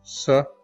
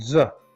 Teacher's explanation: sir is this sound that does not have vibration and so it is voiceless and we know that za is a sound that does have vibration and so it is voiced